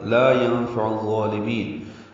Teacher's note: عین وسط حلق سے ادا کریں گے اور ضاد سے ملائیں گے